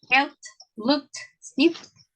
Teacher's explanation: Las letras que están ahí en mayúscula son las que corresponden a esa categoría, cuando el verbo está en presente. Quiere decir que cuando es pasado, lo vamos a pronunciar con ese sonidito de la T.